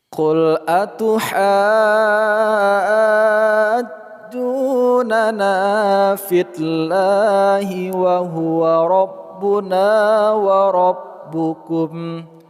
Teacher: lafaz Allah kita baca secara tarqiq atau tipis karena huruf sebelumnya berakat kasrah